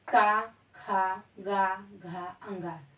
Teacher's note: ये हमारे कंठ से बोले जाते हैं कंठ से उच्चारण किए जाते हैं